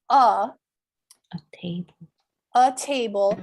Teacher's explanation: we want to pronounce that with the schwa sound, instead of a, so that the language sounds more natural